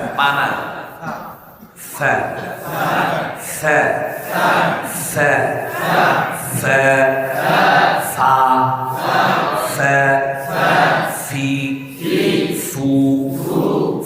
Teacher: 14 নম্বর মাখরাজ নিচের ঠোঁটের পেশ, সামনের উপরের 2 দাঁতের আগার সাথে লাগিয়ে, অর্থাৎ থানায় উলিয়ার আগার সাথে লাগিয়ে ফা উচ্চারিত হয়।